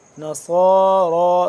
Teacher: صاد بھی موٹا را بھی موٹا، ایک ایک الف کے برابر ہم لمبا کریں گے